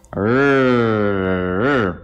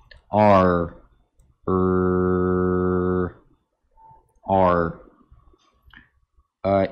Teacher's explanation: А вот, дело в том, что американский R это не просто альвеолярный аппроксимант, это огубленный альвеолярный аппроксимант, поэтому требуется немного, значит, округлить губы.